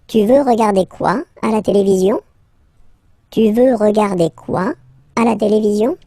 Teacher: raise the voice at the end to make it clear that it's a question